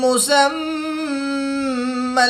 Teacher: دو پیش کی تنوین کے بعد میم حروف یرملون میں سے ہے تو یہاں پر ادغام مائل غنہ ہوگا، غنہ زمانی کر کے پڑھیں گے. یہاں پر میم مشدد ہے، میم مشدد میں ہمیشہ غنہ ہوتا ہے تو یہاں پر ہم غنہ آنی کر کے پڑھیں گے.